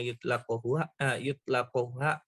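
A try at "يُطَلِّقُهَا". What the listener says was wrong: bacanya bukan yutlaq, yutalliquha. Kalau tolak sorry itu harus pakai lafaz tolaqa yutalliqu.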